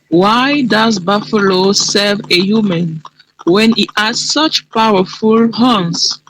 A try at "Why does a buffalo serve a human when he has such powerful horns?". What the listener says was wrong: Good, but only one sound missing in the beginning of your sentence. Listen again.